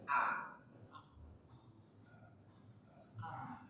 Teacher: ada hamzah dari pangkal tenggorokan